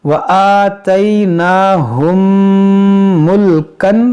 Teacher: मीम साकिन के बाद दूसरी मीम है, यहाँ पर इदगाम शफवी करेंगे यानी गुन्ना करेंगे